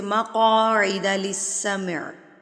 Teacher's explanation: قاف پر کر کے پڑھیں گے، موٹا قاف ہے، یہ حروف مستعلیہ میں سے ہے، موٹے حروف میں سے